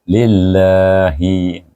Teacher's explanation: Baik, lepas itu kita idgham syamsikan dan dibaca dengan nipis kerana lam berbaris ya